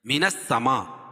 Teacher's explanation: حروف مدہ کے بعد حمزہ اسی کلمے میں تو مد متصل ہوتا ہے، اس میں توسط اور طول ہے